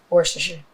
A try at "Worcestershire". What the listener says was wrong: You missed a lot of syllables in there, but All these, They just put them in there.